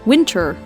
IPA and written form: ˈʋɪn.tər (Winter)